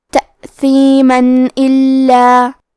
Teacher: آخری میں میم پہ تنوین زبر ہے، ہم یہ کلمہ کو اگلی آیت کے ساتھ ملا کے پڑھے تو حرف الالف کلمت الا دوسری والی آیت میں حروف الاظہار میں سے ہے تو ہم تنوین کو ظاہر کریں گے اور بغیر غنہ سے یہ حکم کو ادا کریں گے